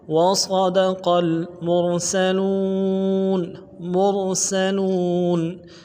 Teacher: صاد کو موٹا ادا کرنا ہے، صاد کی سیٹی موٹی ہوگی